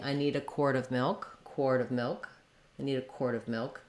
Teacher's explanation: that w sound is not always super strong